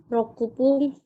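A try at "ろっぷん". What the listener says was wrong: Bukan rokupung. Bukan rokupung ya. Ada su kecil di situ. Ada su kecilnya. ku-nya hilang. Jadi ropung. Rop ya. Dia itu diamnya di P. Ropung.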